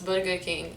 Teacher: we actually roll the rs a bit not like americans they have the r sound we don't have that so it's